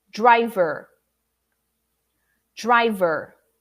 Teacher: don't eat up the syllable both are strong both are important the first one is more emphasized and more stressed than the second one